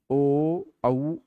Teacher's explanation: ओ औ ओष्ठ और कंठ दोनों का प्रयोग है।